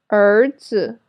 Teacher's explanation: This sound is similar to the ER sound in writer in American English, but it's longer. So raise your tongue a little higher and hold the position. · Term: special final